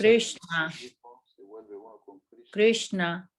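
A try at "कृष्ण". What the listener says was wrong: N, la N es más, como dice, es cerebral, viene desde la garganta, así como si se estuviera ahorcando. No, no, Krishna. Nosotros normalmente pronunciamos Krishna, Krishna, Krishna, como nos da, ahora sí que el español, ¿no? Krishna. La S, por ejemplo, en Krishna, como nosotros pronunciamos normalmente Krishna, es como la S, la otra, ¿no? De Shravanam.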